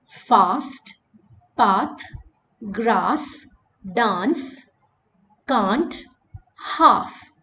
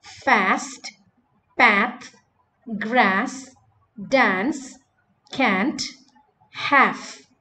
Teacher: In American English, the same words are pronounced fast, path, grass, dance, can't, half. So British English uses ah, American English uses a.